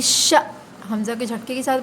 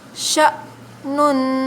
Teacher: حمزہ کے اوپر سکون آ جائے تو حمزہ کے اوپر حمزہ کو جھٹکے کے ساتھ پڑھا جاتا ہے